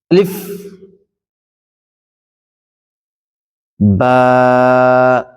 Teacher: আলিফ এরকম লম্বা হবে না আলিফ টা স্পষ্ট হবে তাড়াতাড়ি হবে আলিফ বা হবে ঠোঁটের ভিজা অংশ থেকে বা তা আমার সঙ্গে